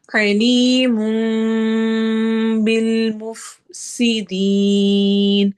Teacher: अलीमुम बिल मुफसिदीन, अली या मद्दा, मुम पे इक़लाब हो रहा है, तनवीन के बाद बा आ रहा है तो हम उसके साउंड को मीम में बदल देंगे। मुफ सी, सीन में सिटी वाली आवाज और दीन को आगे मद आरिद लिल सुकून करते हुए लंबा करेंगे।